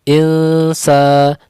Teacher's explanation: Insa nun bertemu sa didengungkan, disamarkan, ditipiskan. Insa sa dibaca 2 harokat disebabkan ada mad alif dan setelahnya tidak ada hamzah ataupun sukun asli.